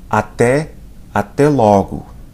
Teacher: Notice the sound on até, até logo. It's an open vowel.